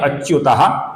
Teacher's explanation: इसके आगे प आने के कारण विसर्ग का हल्का सा फ हुआ है